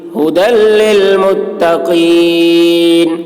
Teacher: یہ ہا شروع حلق سے نکلتا ہے۔